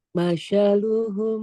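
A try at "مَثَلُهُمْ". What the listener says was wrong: sa-nya ujung lidah Bu. Kayak cedal, kayak manja. Masalu sa ujung lidah ke ujung gigi. Masaluhum sa, bukan sin, bukan shin. Masa.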